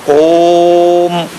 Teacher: ओ को 3 मात्रा 3 गुना ज्यादा ऊंचा स्वर लेकर बोलना ओम, और जो मां है वो एकाएक आपके मुंह से निकले। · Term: प्लुत